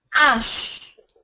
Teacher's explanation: the alphabet H in the word is silent it's not even aspirated